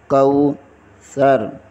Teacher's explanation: کو کا واو ادا کریں گے، واو ادا کرتے ہوئے ہونٹ گول کریں گے